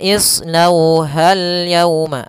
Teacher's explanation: Nah, kemudian shad juga tebalkan, pangkal lidahnya terangkat